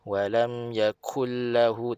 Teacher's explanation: idgham bila gunnah, masuk lam sabdu tu tanpa dengung lah. Walam yaku, ku muncung, kullah.